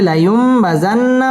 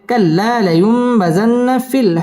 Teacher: নুনের মধ্যে তাজদিদ আসছে গুন্না করে পড়তে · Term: ওয়াজিব গুন্না